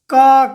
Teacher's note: इसका उच्चारण कंठ से होता है। इसीलिए हम लोग इसे कंठ वर्ण कहते हैं।